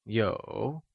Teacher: Yǒu is pronounced with the falling rising tone